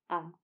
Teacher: आप जब आ को उच्चारित करेंगे तो आप यह देख पाएंगे कि आ को उच्चारित करते समय बाकी स्वरों की तुलना में आपका मुंह ज्यादा खुल रहा है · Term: विवृत स्वर